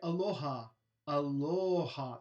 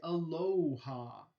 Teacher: aloha that's a monophthong but all the english speakers want to say aloha that's a diphthong